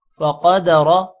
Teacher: لام پر کھڑی زبر ہے تھوڑا سا لمبا کریں گے فَقَدَرَ قاف موٹا ہوگا اور را بھی موٹا ہوگا